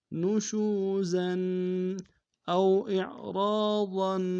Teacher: او میں واو لین ہے بغیر کھینچے پڑھیں گے